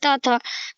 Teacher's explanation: तो दंत व्यंजन का वर्ग कौन सा है, त वर्ग का जो है हमारा त थ द ध, वो है दंत व्यंजन। इसका उच्चारण जो है दांतों के पास जीभ लगाकर किया जाता है। मतलब जब आप बोलेंगे इसे त थ, तो तब हमारा जीभ क्या होता है, वो हमारे दांतों से स्पर्श होता है।